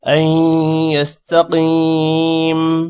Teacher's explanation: يستقيم حمزہ کے بعد یا آ رہا ہے غنہ ہوگا یستقیم قوف موٹا ہوگا اور قوف کے بعد یا ہے تھوڑا سا لمبا کریں گے